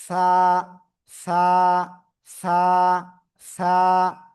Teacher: জিহ্বার আগা সামনের উপরে দুই দাঁতের আগায় লাগানো, লাগিয়ে হালকা বাতাস বের করে এক আলিফ টানিয়া এই অক্ষরটা উচ্চারণ করতে হবে।